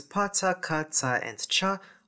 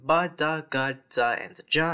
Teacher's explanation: Voiceless obstruents /p/ /t/ /k/ /ts/ and /tʃ/ all become voiced [b] [d] [g] [dz] and [dʒ] after nasal consonants.